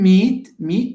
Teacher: the T of meat is not pronounced with aspiration because it's not at the beginning of a syllable and it's not followed with a valve that is strong okay